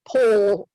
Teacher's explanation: there are a lot of speakers of English that don't touch their tongue tip at all, and just say pole, and don't ever get to the L. They just turn it into a vowel, like you said.